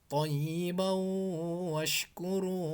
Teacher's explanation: Thayyibau itu sambil ditahan sebanyak kira-kira 2 harokat. Thayyibau washkuru.